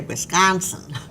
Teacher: the ah sound in wisconsin which wisconsinites say wisconsin it's that wide open ah